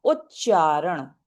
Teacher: तो स और त चेंजेस टू श और च व्हेन फॉललोड बाय श और अ पेेटल साउंड तो पैेटल साउंड मींस जो जो साउंड तालु से निकलती है तो क्या होता है कि यदि ठीक है तो जैसे यह है ता उत ये है त यहां पे है ना त चेंजेस टू च तो उत प्लस चारण चारण क्या है पैेटल साउंड है ना च तालू से निकल रहा है